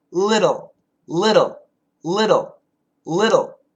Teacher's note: it's a flap T sound with a dark L.